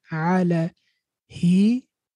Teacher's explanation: they stretch the kasra at the end